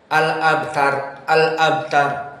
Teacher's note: Maka ro jadilah dia mufahamah karena dalam keadaan Sukun dan sebelumnya fathah